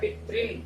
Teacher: जो छोटी री की मात्रा थी यानी ह्रस्व ऋकार था, वो अब डबल हो गया, यानी कि दीर्घ ऋकार यहाँ पे हो गया